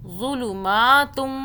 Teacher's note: اس کو زود پڑھنا ہے، زو پڑھنا ہے، زال کی آواز میں نہیں پڑھنا